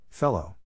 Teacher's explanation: the accent is in the first syllable, corresponding to fell.